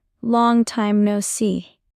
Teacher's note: Stress the first and last words. long and see